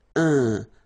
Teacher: So it's nasal and it's un. So it really goes in your nose. You don't pronounce the M at all.